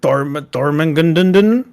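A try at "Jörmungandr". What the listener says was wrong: Nope, not Thor. It's Jormungandr. Jormungandr!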